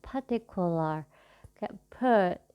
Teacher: pronunciation R-nya nggak diucapkan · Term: non-rotik